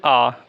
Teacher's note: तो आ बोलने पर क्या होता है? हमारा मुख पूरी तरीके से खुला होता है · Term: विवृत